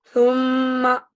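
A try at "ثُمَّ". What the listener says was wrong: Su-nya pendek. Ini namanya kosar. Mimnya bertasdid.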